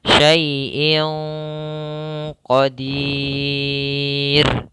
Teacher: menyamarkan suara nunnya atau suara tanwinnya